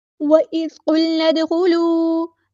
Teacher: دال کو یہاں پہ ہلانا ہے، دال ساکن کو، کیونکہ قلقلہ ہوگا یہاں پہ